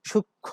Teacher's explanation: তো এটার উচ্চারণ সূক্ষ্ম না, সূক্ষ্ম না, সূক্ষ্ম। শেষ ধ্বনিতে একটু অনুনাসিকতার সৃষ্টি হয়েছে।